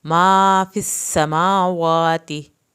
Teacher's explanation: सीन को सीटी के आवाज़ के साथ पढ़ना है, सीन की शद अदा करनी है।